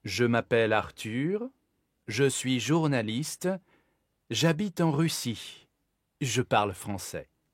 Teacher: So the tone goes up at the end of every group and it goes down at the last one. Donc, je m'appelle Arthur, je suis journaliste, j'habite en Russie, je parle français. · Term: groupe rythmique